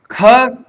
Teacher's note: ख कंठ है, महाप्राण है, अघोष है।